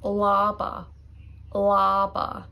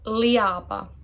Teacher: People think it is like ia. The A dominates. So the E is practically silent there. Laba. Yeah, it is silent.